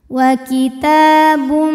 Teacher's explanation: ditahan didengungkan Nuru wa kita ta hukumnya adalah Mad thi'i muqaddar karena huruf ta berbaris fathah panjang maka huruf Ta ini kita panjangkan dua harakat